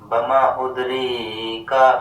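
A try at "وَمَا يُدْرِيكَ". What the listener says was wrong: وما یدریک، ادری نہیں ہے، ید، وما یدریک،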